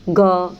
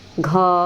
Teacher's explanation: तो महाप्राण में अधिक समय लगता है। ठीक है, महाप्राण में अधिक समय लगता है, अधिक प्रयत्न करना पड़ता है